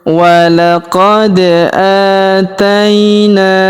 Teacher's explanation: Perhatikan huruf da kita pantulkan atau kita qalqalahkan karena berharakat sukun ya.